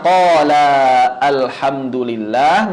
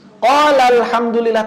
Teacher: Madnya dihilangkan. Suara madnya yang asalnya qola alhamdulillah menjadi qol alhamdulillah tanpa mad loh